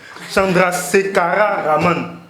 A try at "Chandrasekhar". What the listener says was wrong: J'ai Subrahmayan, bon, peu importe, mais c'est Chandrasekhar. Il n'y a pas de A à la fin. Il n'y a pas de A à la fin.